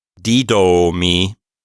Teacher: But this word is kind of like iatros in that the accent is on a different syllable than the long vowel. So the long vowel omega, we have to hold it out for longer, but it's not the accented vowel. That first iota is the accented vowel. · we need to put the stress on the D, but we still need to lengthen the O. So we have to treat accent and vowel length as two separate things, and we have to apply them differently to different syllables.